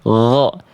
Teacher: fokus ketika teman-teman melafalkan huruf ghoin, fokusnya di mengalirkan suara. Bukan mengalirkan nafas, jadi fokus huruf ghoin itu ketika dilafalkan teman-teman, ya, jaga nafasnya agar tertahan dan cukup suaranya saja yang mengalir tanpa disertai angin. · huruf ghoin ini jangan sampai keluar bunyi yang keresek-keresek, berarti tandanya ghoinnya sudah melipir ke huruf kho, sedangkan ghoin gho.